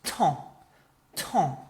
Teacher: So your throat kind of blocks and the sound goes into your nose.